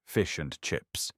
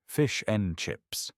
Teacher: The and becomes just a tiny sound.